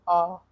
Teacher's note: विवृत स्वर या निम्न स्वर ऐसी ध्वनि होते हैं जिनमें जिह्वा के मुंह में जितना संभव हो सके उतना नीचे तालु से दूर रखा जा सके।